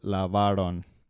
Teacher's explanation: it's not on the last syllable it's on the second-to-last